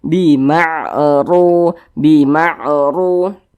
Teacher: Huruf ra memiliki tanda baca dhammah, memiliki tanda baca fathah, dia dibaca tebal. Sehingga huruf ra-nya itu kita tebalkan, pangkal lisan kita naik terangkat ke atas ketika kita mengucapkannya. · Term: dibaca tafkhim